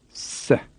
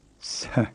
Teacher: Again, they're a plain and aspirate pair. The plain S is a very tight hiss, s, and in the other S, the aspirate S, you can hear an H sound after the S, s. Try these two words after the tape.